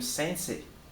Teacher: Você vai colocar um I no final. Sílabas terminadas em E e seguida de I. Prolonga-se o som do E. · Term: E prolongado